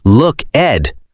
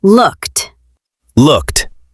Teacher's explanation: The ed sounds like a t sound at the end. >> Yes, we do not say look, Ed.